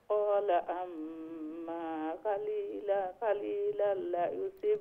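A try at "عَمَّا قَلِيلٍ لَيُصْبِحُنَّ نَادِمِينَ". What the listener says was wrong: قليل لا লামন নিচে জের দুইটা।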